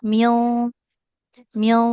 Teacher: nun sukun ketemu qaf itu harus tebal ikhfanya